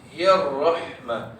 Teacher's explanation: Cuma ra ni memang kena baca dengan tebal. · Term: ra tebal